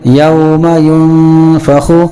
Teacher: اس نون کی آواز کو بھی ہم ناک میں چھپا کر پڑھیں گے